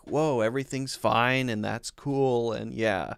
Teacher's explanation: everything he says kind of has a slightly upward inflection when he talks and it just feels a little bit more like whoa everything's